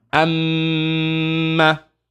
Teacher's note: if we have meme with sukoon, and after it's a meme, hold the meme, pronounce the ghunna.